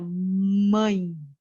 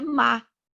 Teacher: Do palato aqui, que é mais o céu da boca, você vai ver que a língua bate no céu da boca, você vai ver que vai ter consoantes que o som vai sair pelo nariz e não vai sair pela boca, quando você fala mãe. Então, o som retumba nessa cavidade nasal, diferente de má